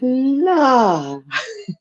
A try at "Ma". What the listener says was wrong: Yeah. It was an M as in Mary.